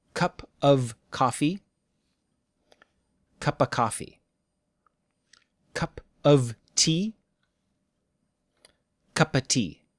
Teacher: we also usually cut off the sound from of before a consonant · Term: cut off the V sound